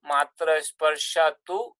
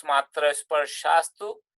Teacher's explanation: And if you look at sandhi here, matra sparshatu, so that becomes matra sparshastu, because the visarga followed by takara becomes sakara